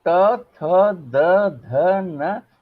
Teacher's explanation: उच्चारण करके आप देखिए, जब हम कहते हैं त, थ, द, ध, न, तो आप देख लीजिए हमारी जीभ जाती है और दांत के पिछले हिस्से को स्पर्श करती है।